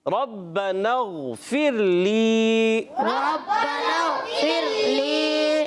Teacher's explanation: پھر لی میں را باریک, را ساکن سے پہلے زیر, را باریک کرنا ہے, اور لی یا مدہ ایک کھینچیں گے